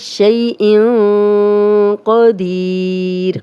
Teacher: دال پہ زیر 2 حرکات لمبا کریں گے · یاد بھی کر چکے ہیں ان کے نام بھی۔ شیء قدیر، قوف کو موٹا پڑھیں گے، یہ ان 7 موٹے حروف میں سے ہے ، اس کو قدیر نہیں پڑھیں گے، کاف باریک نہیں پڑھیں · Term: یا مدہ, موٹا قوف